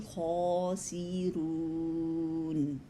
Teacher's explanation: सीन की आवाज़ में अच्छी सी सीटी की सी आवाज़ होगी